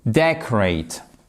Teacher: Vous avez l'accentuation, même s'il se ressemble beaucoup, même si c'est le nom et le verbe, sur la première syllabe, qui est ici, sur cette partie.